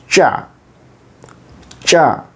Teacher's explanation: So ta plus sha equals cha